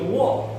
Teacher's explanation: उसमें मुंह आपका चिपकेगा नहीं, वो दोनों होंठ गोल हो जाएंगे